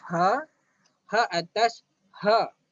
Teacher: Huruf ha keluar daripada pangkal halqum juga. Dia tak keluar ikut mata, dia tak keluar ikut hidung, tapi dia keluar ikut halqum, iaitu bahagian pangkal, bahagian permulaan halqum.